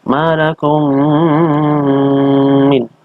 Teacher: Ini sebabnya karena ada huruf kembar, yaitu huruf mim yang sama. Mim mati bertemu dengan mim. Dibacanya dengan dengung. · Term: idgham mislain